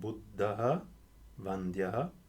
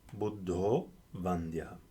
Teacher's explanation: I can pronounce this sentence without applying the sandhi, in which case I have buddhaḥ, vandyāḥ, or if I apply the sandhi, the aha in front of va becomes o